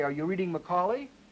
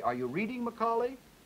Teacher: And I put a single bar juncture in there, and put a primary stress here and put the three there, I have now two intonation patterns. The word Macaulay now forms an intonation pattern all by itself. Stays on three, goes up to double bar, and now, because of what I've done with the intonation, I now know that I'm asking a person named Macaulay whether he's reading.